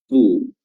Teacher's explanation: fa dari ujung gigi seri atas bertemu dengan perut bibir bawah